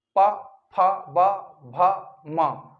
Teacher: दोनों होंठ मिलने का प्रयास करेंगे, ऐसे मिलेंगे और वायु के मार्ग में अवरोध पैदा करेंगे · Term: ओष्ठ व्यंजन